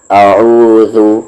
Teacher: اعو, ذال پر پیش ہے ذو, اعوذ. زبان کا کارنر اور سامنے والے اوپر کے دو دانت کا کارنر ذال